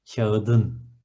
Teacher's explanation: T is an explosive one, is in ketchup, as you see, so it is going to alternate itself to D, a softer version